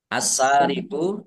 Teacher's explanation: alif lam samsiah karena tidak dibaca, ya langsung masuk ke huruf berikutnya yaitu sin, ditandai sinnya ada tasdidnya. Wasariqu, sin fathah alif mat tabi'i panjang 2 harokat.